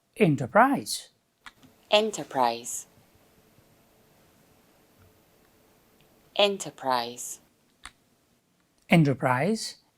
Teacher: Enterprise it has three syllables and where does the stress fall stress falls on the first syllable